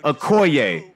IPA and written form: oʊˈkɔɪeɪ (Okoye)